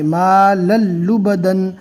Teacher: تنوین کو چھوڑ دیں گے، دو زبر کی جگہ صرف ایک زبر ہی پڑھنا ہے